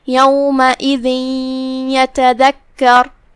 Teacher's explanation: ہم یہ تنوین کو یا میں داخل کر کے غنہ کے ساتھ اور تشدید کے ساتھ یہ حکم کو ادا کریں گے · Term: ادغام